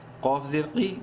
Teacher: قوف زیر قی، منہ بھر کے پڑھیں گے